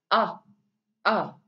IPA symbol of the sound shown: ʌ